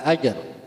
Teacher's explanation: dibaca mantul karena mengandung hukum qalqalah sugra jim sukun di tengah kalimah atau sukunnya sukun asli. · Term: qalqalah sughra